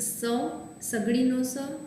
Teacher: સ છે એને દંત્ય સંઘર્ષીમાં મૂકેલ